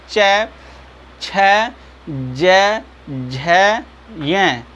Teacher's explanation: आप देख पा रहे हैं आपकी जिह्वा जो होती है वो जा कर के ऊपर तालु को टच करती है। जिह्वा आपकी कहाँ टच करती है, तालव्य को, यानी तालु को ऊपर एकदम टच।